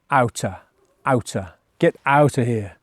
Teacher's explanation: Out of becomes outer. With outer, we do say a full T sound